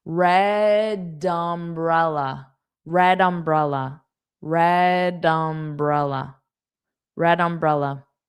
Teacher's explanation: I'm going to add that d onto the next sound, dum. Dum. dumbrella. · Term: connected speech